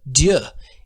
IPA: dj